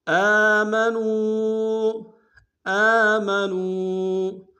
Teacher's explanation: آمنوا، آمنوا، حمزہ کے اوپر کھڑا زبر ہے، ایک انداز میں کھینچیں گے، نون کو واو کے سامنے لائیں گے، واو مدہ ایک انداز میں کھینچیں گے